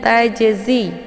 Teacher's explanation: jimnya terdapat di pertengahan kalimat maka ini dinamakan dengan qolqolah jadi cara bacanya jimnya dipantulkan dengan pantulan yang ringan ataupun dipantulkan dengan sekedar pantulan saja ya tidak perlu dipantul dengan pantulan yang kuat dibaca panjang ya